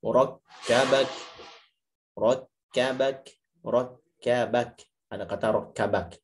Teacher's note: Itu kaf yang berharokat fathah dengan kaf yang disukunkan karena faktor wakaf itu harus sama-sama hams. Jangan sampai yang harokatnya enggak hams, yang wakafnya malah hams atau sebaliknya. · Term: sifat hams